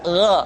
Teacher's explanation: mesti terdengar menebal g gi gu bag perhatikan posisi mulut kita ketika Mengucapkan dalam keadaan fathah tidak di monyongkan o tapi terbuka